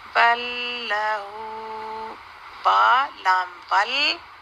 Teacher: لام ساکن کے بعد بھی نیکسٹ لام آ جائے تو وہ بھی دونوں کا آپس میں ادغام ہو جاتا ہے ، اور اس لیے لام کے اوپر تشدید ڈال